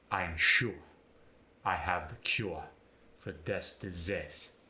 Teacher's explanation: The ooer sound, as in cure, ensure, get the ua sound.